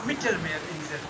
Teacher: So E is little suppressed and A is little elongated.